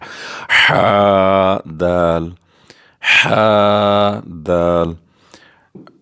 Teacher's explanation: ح بغیر نقطے کے وسط حلق سے ادا ہوتا ہے